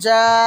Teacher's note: তো এরপরে আমরা পড়লাম যা, অনেকটা এক্সট্রা টান দিলাম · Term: মাদ্দা মুত্তাসিল